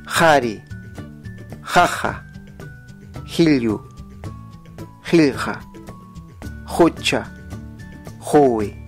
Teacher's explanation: se conoce como fricativa posvelar sorda. Así que en quechua ayacucho chanca suena así: jari, jaja, jilyu, jilja, jucha, jui.